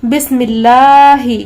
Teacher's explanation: یہاں پر دیکھیں بسم اللہ الرحمن الرحیم لکھا ہوا ہے، تو یہاں پر جو اللہ ہے، اللہ تعالیٰ کا جو نام ہے، اس کے پہلے یہاں پر دیکھیں میم پر زیر ہے، تو اس اسم جلالت اللہ عز و جل کے لام کو ہمیں باریک پڑھنا ہے، چونکہ اس کے پہلے والے حرف پر زیر لگی ہوئی ہے